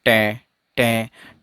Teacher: जो tip of tongue है ये टीथ रिज पर जाकर तो टकराएगा, लेकिन टकराने के बाद वापस नीचे की तरफ आएगा। जैसे ये आपके ऊपर वाले दांत हैं और नीचे वाले दांत हैं, और यहाँ जो जीभ का हिस्सा है ये ऊपर, जो इन दांतों के ऊपर टीथ रिज है वहाँ जाके टकराएगी जीभ आपकी, लेकिन टकराते ही जीभ वापस नीचे की तरफ आ जाएगी। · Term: एल्वियोलर